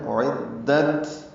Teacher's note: اعدت، حمزہ اقصی حلق سے، عین وسط حلق سے ادا ہوں، دونوں الگ الگ، حمزہ بالجہر ادا ہو، عین نرمی سے ادا ہوتا ہے، دال سے ملاتے ہیں، دال کو تا سے ملانا ہے۔ اعدت، تا ساکن ہے، اس پہ حمز ہے، نرمی سے پڑھا جائے گا، ہلکی سی سانس کی آواز جاری رہے گی